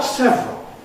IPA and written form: ˈsevrəl (several)